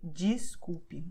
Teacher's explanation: DES is usually pronounced DIS. So you say desculpe, even though it's written desculpe.